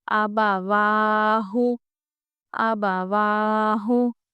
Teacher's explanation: آبا ہم جلدی پڑھ رہے ہیں، کیوں؟ کیونکہ یہ حرکت ہے صرف۔ واہ ہم کو کھینچنا ہے، کیوں؟ کیونکہ واو کے اوپر کھڑا زبر ہے، اور کھڑا زبر حروف مدہ الف کے برابر ہے، کیونکہ اس کی آواز بھی اوپر جا رہی ہے، اس لیے ہم اس کو کھینچ کے ہی پڑھیں گے، اور یہ الف مدہ کے برابر ہے۔